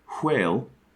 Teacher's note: the unvoiced version like you might say if you're trying to say the word whale in a pretentious or old-timey way is written with an upside down w so with this knowledge